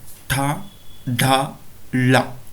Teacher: ಅಂತ ಕರೀತೀವಿ ತಾಲವ್ಯ ಧ್ವನಿಯ ಗುಂಪಿನ ಅಕ್ಷರಗಳಿಗೆ ಉದಾಹರಣೆ ಯಾವುವು ತಾಲವ್ಯ ಅಂತ ಹೇಳಿದ್ರೆ ನಾಲಿಗೆಯನ್ನ ಹಿಂಭಾಗಕ್ಕೆ ಮಡಚಿ ಮೇಲ್ಭಾಗದ ದವಡೆಯನ್ನ ಟಚ್ ಮಾಡುವುದರ ಮೂಲಕ ಈ ಅಕ್ಷರಗಳನ್ನು ಉಚ್ಚಾರಣೆ ಮಾಡ್ತೀವಿ · ನಮ್ಮ ನಾಲಿಗೆಯ ಮುಂಭಾಗ ಏನಿದೆ ಅದನ್ನ ಮೇಲ್ಭಾಗದ ತುದಿಗೆ ಸ್ಪರ್ಶ ಮಾಡುವುದರ ಮೂಲಕ ಈ ಅಕ್ಷರಗಳನ್ನು ಉಚ್ಚರಿಸುತ್ತೇವೆ